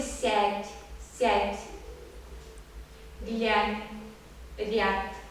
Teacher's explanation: Звук у нас это что-то среднее между А и Я. то есть это очень мягкий А, если так сказать.